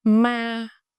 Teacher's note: The first one is a flat tone, no mark. Flat tone, steady pitch, no rising or falling.